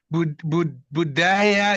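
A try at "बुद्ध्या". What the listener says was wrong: Buddhya, not Buddhaya, Buddhya. There's no A after the H.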